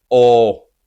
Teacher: in Spanish it sounds like O without the closing U in the end. Like when you say O, you in English pronounce O. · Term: the Spanish O, Spanish O